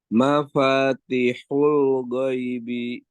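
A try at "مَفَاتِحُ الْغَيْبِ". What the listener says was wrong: Jangan go tapi ghai. Ghai.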